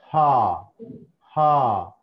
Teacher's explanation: హా హా హా అన్నప్పుడు చూడండి, నోరు తెరవాలి. నోరు తెరిచి ఈ వోకల్ కార్డ్స్ దగ్గర మనం గాలి ఆగి వదిలిపెడతాం అన్నట్టు. హా హా. నాలుక ఏం కదలదు ఇక్కడ. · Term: గ్లాటల్